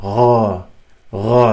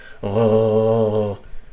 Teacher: ghain comes back to the top of the throat, where which you used to say kha.